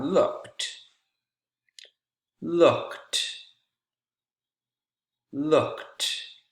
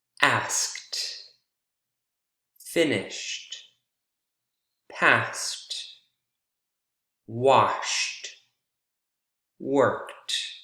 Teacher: ed sounds like t why because the consonant sound that comes right before is voiceless